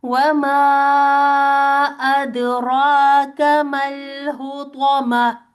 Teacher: तो को पुर पढ़ना है, हा को साकिन करना है